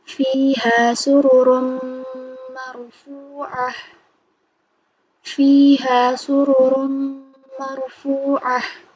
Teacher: Nun atau tanwin dilebur dan langsung membaca huruf sesudahnya, tapi ditahan sebanyak 3 harokat. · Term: idgham bigunah